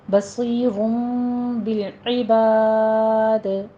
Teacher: دال کا ہم قلقلہ کریں گے کیونکہ دال ساکن ہو رہا ہے